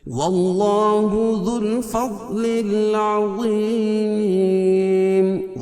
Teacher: ذل دال باریک پڑھیں گے اور فض کی ضاد کو پر پڑھیں گے